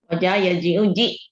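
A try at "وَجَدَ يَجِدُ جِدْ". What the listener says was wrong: Pakai dal, wajada, yajidu, jid.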